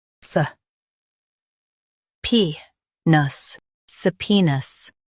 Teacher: Stress pee and keep nuhs light.